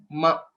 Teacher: the fifth letter, which is ma, is labial. So we'll have to close our mouth while pronouncing it.